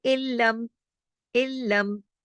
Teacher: इल्लम इदगाम हो रहा है और गुन्ना नहीं हो रहा, इसको कहते हैं इदगाम ताम बिला गुन्ना, बगैर गुन्ने के, ठीक है।